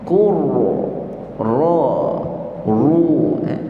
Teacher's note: Tapi kalau kita nak tebalkan ra, yang belakang tu kita angkat sikit. Dia ada melengkung sikit.